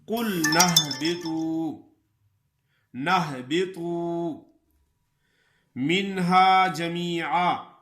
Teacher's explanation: قلنا والا الف مدہ اور حمزہ وصلی یہ دونوں حذف ہو جائیں گے · قُلْنَا اهْبِطُوا، اصل میں ہے قُلْنَا اهْبِطُوا، لیکن اهْبِطُوا کا جو حمزہ ہے یہ حمزہ وصلی ہے. حمزہ وصلی درمیان کلام میں حذف ہو جاتا ہے. اگر ہم پڑھیں گے کہ قُلْنَا تو پھر تو یہ حمزہ وصلی پڑھا جائے گا اهْبِطُوا. · منہا نون ساکن ہے لیکن یہاں غنہ نہیں ہوگا